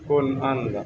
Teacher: Nun sukun bertemu dengan alif, jangan ditahan. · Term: ijhar